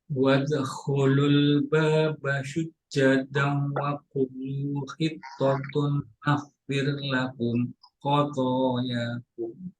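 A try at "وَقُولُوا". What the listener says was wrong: Perhatikan pada kata wadkhulul baba sujjada wa qulu ya. Dua harakat, dua harakat.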